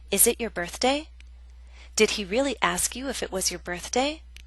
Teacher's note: Examples A and C are real yes-no questions. Our voice goes up. There is rising intonation.